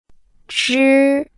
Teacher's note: Imagine saying J, but with your tongue curled up like holding a potato chip. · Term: ZH